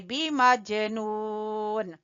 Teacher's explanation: जीम के ऊपर कलकला करेंगे